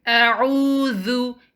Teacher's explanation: Remember, for the last letter, dal, you have to bring the tip of your tongue outside. It should be touching your upper two incisors and it should be slightly seen outside